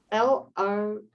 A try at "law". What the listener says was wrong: No, LAW. It's not the lore of love, it's the law of love.